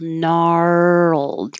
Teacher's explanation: you need time to go from the R to the L. Gnarled, keep making sound the whole time, and it means twisted, knotted.